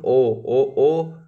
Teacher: देना ये वाला ओ है कंठ उष ठीक है याद रखना कंठ प्लस ओष्ठ से आएगी इसकी आवाज